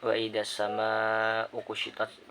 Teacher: Lanjut pada ayat 11 yakni wa idas sama ukushitat, pada kalimat wa idas sama itu terdapat alif lam syamsiah sebab ada alif lam bertemu dengan huruf syamsiah yaitu sin, jadi ketika dibaca huruf lamnya tidak tampak